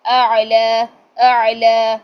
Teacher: عین درمیان سے آ رہا ہے جہاں پہ ایپیگلوٹس ہوتی ہے